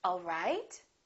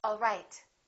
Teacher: My pitch goes down at the end for a statement, all right. Now, if this is a question, I would say it differently. The word right, the pitch would go up. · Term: rising intonation